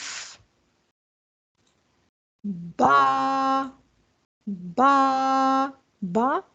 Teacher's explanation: होठों को दोनों होठों के तर हिस्से को मिलाने से मजबूती से मिलाने से अदा होता है · با ہونٹوں کو، دونوں ہونٹوں کے تر حصے کو ملانے سے، مضبوطی سے ملانے سے ادا ہوتا ہے